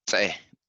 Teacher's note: This fidel here is pronounced with an explosion of breath with your tongue pressed against your front teeth. That's the te, the te.